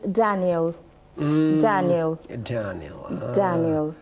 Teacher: la da va seguida de una especie de za, da, da, da, da, como en Daniel.